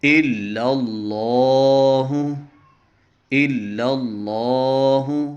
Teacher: اس لام کو موٹا کریں گے کیونکہ جب لام سے پہلے زبر ہو یا پیش ہو تو اس لام کو موٹا کرتے ہیں، اگر زیر ہو تو اس کو بریک کرتے ہیں، جیسے بسم اللہ میں۔